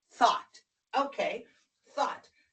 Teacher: Now the T-H is unvoiced, and the O-U-G-H is a ah, not a O. Oh, no, ah.